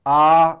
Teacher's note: 첫 번째 평성조가 있는데 이 평성조는 보통 이성이라고 얘기를 해요. 유주얼 톤인데 처음과 끝이 같은 소리입니다.